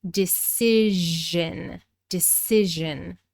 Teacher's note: This changes from a long I sound in decide to a short I sound, and we're pronouncing the voiced zh in decision